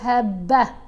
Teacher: گول تا کے اوپر وقف آ جائے تو یہ تا سائلنٹ ہو جاتی ہے، ہا کی آواز دیتی ہے